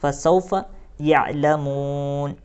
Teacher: یہاں پر وقف کرنا ہے تو اس نون کو ساکن بنائیں گے اور سانس کو توڑ دیں گے